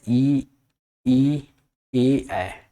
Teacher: हमारे जीभ के फ्रंट से आते हैं